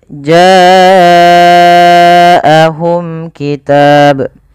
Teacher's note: Pada lafal bacaan jaahum ini wajib kita panjangkan sepanjang empat atau lima harakat. Kenapa? Karena ia ada bacaan yang dinamakan dengan mad wajib muttasil.